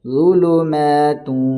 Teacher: یعنی غنے کے ساتھ پڑھیں گے، ناک میں آواز کو تھوڑی دیر روکیں گے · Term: ادغام مع الغنہ